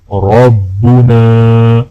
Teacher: نون کو الف کے ساتھ ملاتے ہوئے ایک الف کے برابر کھینچیں گے